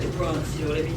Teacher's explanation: The Bronx is dark, it's in the back of your throat. And you drop in your final R's and you have heavy initial emphasis on your consonants because the Bronx is a very big borough.